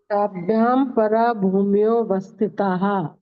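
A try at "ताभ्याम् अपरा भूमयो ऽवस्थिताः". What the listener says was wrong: देखिए ताभ्याम परा नहीं है, ताभ्याम में म हलंत है और फिर शब्द है अपरा, तो म पे जोड़ देंगे संधि सहित बोलेंगे तो, नहीं तो फिर अपरा ही बोलें, पर मैं पे जोड़ दे के बोलना हो ज्यादा अच्छा है, छोटा ही है सूत्र।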